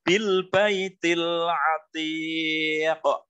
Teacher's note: memantulnya qaf itu relatif lebih besar dibanding dengan kalau di tengah, ya. Bukan dibaca bil baitil atiq, bukan, tetapi harus ada pantulan huruf qafnya. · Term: qalqalah